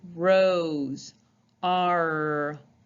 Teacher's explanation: your tongue also with the letter r goes to the top of your mouth but it's in the back part of your mouth